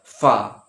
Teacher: এই উপরের দাঁতটা এই নিচের ঠোঁটের সঙ্গে টাচ হয় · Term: ফায়ের মাখরাজ